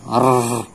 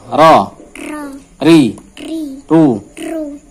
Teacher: Ro sendiri mempunyai sifat takrir. Jadi bergetarnya dibatasi satu atau dua getaran. Tidak lama untuk bergetarnya.